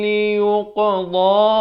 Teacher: Dha makhrajnya di tepi lidah. Tepi lidah, kanan atau kiri. Kanan bawa ke kanan, kiri bawa ke kiri.